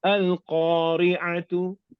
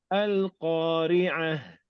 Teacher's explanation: Ta marbuta jadi ha. Bila kita sukun.